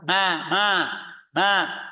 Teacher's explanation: ini berharakat tidak ada tasdid tidak ada Idam tidak ada ikhfa tapi tetap ada gunah